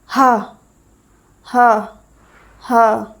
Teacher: हमारा कंठ बंद है एकदम। और एकदम झटके से हवा बाहर निकल रही है। इसलिए इसे काकल्य व्यंजन बोला जाता है। · ह के उच्चारण में मुख गुहा खुली रहती है और जब बंद कंठ को श्वास वायु झटके से खोलकर बाहर निकलती है। इसलिए हम ह को काकल्य व्यंजन बोलते हैं।